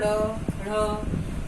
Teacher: ड़, ऊपर की तरफ बोल के देखो, ड़ ढ़, तो हमारी जीभ ऊपर की तरफ उठ करके आगे की तरफ जाती है, इसलिए इनको विशेष व्यंजन कहा जाता है।